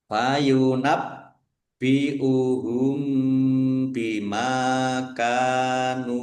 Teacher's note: Mim sukun bertemu dengan huruf ba. Bacaan ikhfa syafawi dibaca samar-samar. Mim fathah alif mad thobi'i. · Bacaan ikhfa syafawi dibaca samar-samar. Mim fathah alif mad thobi'i. Ka fathah alif mad thobi'i. Nun domah wawu sukun juga mad thobi'i. Masing-masing dibaca panjang dua harakat. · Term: ikhfa safawi